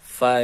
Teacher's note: Fa ini bibir bagian bawah dengan ujung gigi sari atas